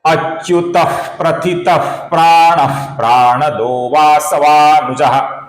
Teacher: अच्युतः प्रथितः प्राणः प्राणदो वासवानुजः। यहां पर प्राणदः का जो विसर्ग है इसके आगे मृदु व्यंजन व आने के कारण विसर्ग का ओ हुआ है। अच्युतः प्रथितः प्राणः प्राणदो वासवानुजः।